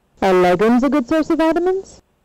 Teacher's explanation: So here a question is being asked whether legumes are a good source of vitamins, and you can see that this rise is very different from the rise that we saw in the other rise fall that we saw in the other sentences. The rise starts from the main accent and it goes all the way till the end of the sentence. So this is a yes-no question tune.